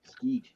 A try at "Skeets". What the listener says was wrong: No, it's Skeets. There's an S on the end of it.